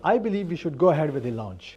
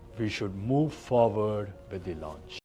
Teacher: The slight rise of the tone at the end of the sentences. It sounds like a question, even if you are making a statement. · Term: upward inflection